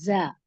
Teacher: जा को आप सीटी से पढ़ेंगे और इसका मखरज भी बिल्कुल मुख्तलिफ है। इसका मखरज है जबान की नोक जब सनाया सुफला और सनाया उलिया के पीछे से दरमियान में। लगती है, जी जी, तो फिर ये निकलता है जा, और सीटी के साथ निकलता है।